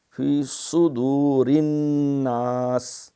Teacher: صاد یہ موٹی سیٹی ہے